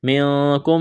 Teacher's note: نون ساکن کے بعد قاف ہے، یہاں پر اخفا کریں گے